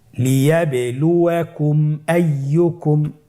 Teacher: মিম সাকিনকে স্পষ্ট করে গুণনা ছাড়া পড়তে হবে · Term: ইজহারে শাফাউই